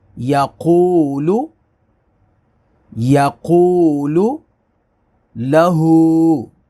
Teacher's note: یہ کھڑی حرکات ہے، الٹا پیش ہے، اس کو الف کے برابر، ایک الف کے برابر کھینچیں گے